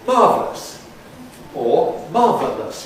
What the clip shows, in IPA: ˈmɑːvləs or ˈmɑːvələs